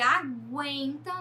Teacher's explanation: no caso de aguenta, nós temos o guen como sílaba tônica